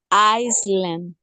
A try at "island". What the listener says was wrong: island, sin la S. Islands. Como pueden ver, no hay S.